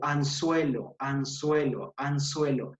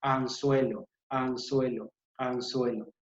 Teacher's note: va a haber un roce de los incisivos o de los dientes superiores con los dientes inferiores. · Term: interdental